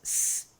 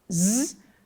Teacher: Assim, o que diferencia s de su de z de z, por exemplo, é a vibração ou não cordas vocais. S é não vozeado e z é vozeado. A diferença entre a não vibração e a vibração pode ser sentida se colocarmos os dedos sobre nosso pomo consoantes S e Z alternadamente.